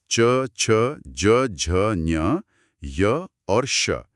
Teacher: जीभ का बीच का हिस्सा ऊपर तालू को छूता है। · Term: तालव्य ध्वनियां